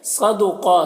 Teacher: نون مشدد ہے تو اسے غنہ کے ساتھ پڑھیں گے، اور یہاں پر جو مد ہے اس مد کو مد متصل کہتے ہیں۔ صدقہ صاد کو پر پڑھنا ہے، اور قاف کو بھی پر پڑھنا ہے یہاں پر، اور قاف کو کھینچنا ہے ایک الف کے برابر۔